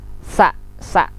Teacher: Sa, lidahnya di bawah dengan ikut dengan gigi bawah.